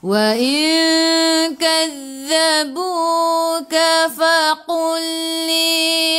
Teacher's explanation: lam bertemu dengan lam idgham mutamathilain masuk ke dalam lam yang kedua